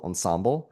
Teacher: And for the life of me, my entire life, I've always had the stress on the second syllable